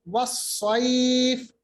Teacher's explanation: وَالصَّيْفِ, صاد کو موٹا پڑھیں گے, یہ بھی حروف مستعلیہ میں سے ہیں. صاد پہ صفت صفیر بھی ہوتی ہے, تیز آواز کی جاتی ہے. اور یا ساکن ماقبل زبر, قریش کی طرح یا پھر سے لین ہے, اور یہ ساکن بنے گا فا, تو یہاں پر مد لین آئے گی.